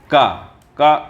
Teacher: अल्प प्राण है अघोष है स्पर्श है कंठ ध्वनि है ठीक है इसमें कंठ से बोला जाने वाला है आगे चलते · इसमें क जो वर्ण है व अल्प प्राण है ठीक पहली शर्त मिल गई अघोष है हां अघोष भी है